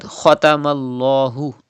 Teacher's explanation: Kha is a mustaliya letter. You have to read with thick voice.